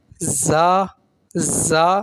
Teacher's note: زا زا سیٹی کے ساتھ ہوگا, یہ حروف صفیریہ میں سے سیٹی والے حروف میں. زا بغیر کھینچے ادا ہوگا یہ بھی.